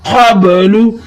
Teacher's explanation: قاب لفظ بنے گا قاب قاف کو قلقلہ کرتے ہوئے پڑھیں لام کے اوپر پیش ہے لو بغیر کھینچے پڑھیں گے